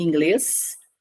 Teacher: Palavra em inglês, sílaba tônica é a última. Estou diante de uma palavra oxítona.